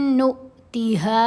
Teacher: نون کو حمزہ ساکن سے ملایا تو جھٹکا دیا